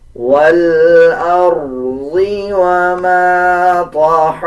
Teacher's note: را کے اوپر جزم ہے، اس سے پہلے والے الفاظ کے اوپر زبر ہے تو را کو پر پڑھا جائے گا